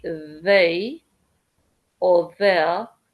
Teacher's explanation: when you say they or the it's that sound actually because it's like a zed sound but you are sticking your tongue out. So that's kind of like the closest sound in English that I can think of. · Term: soft zed